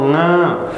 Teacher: नासिका से नाक से आ रही है और साथ में इसको बोलने के लिए आपको कंठ भी खोलना पड़ता है इसलिए एक इसकी आवाज कहां से आती है कंठ से भी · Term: अनुनासिक वर्ण, अनुनासिक